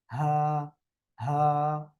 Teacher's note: হলকের শুরু থেকে বা গলার শুরু থেকে উচ্চারণ হবে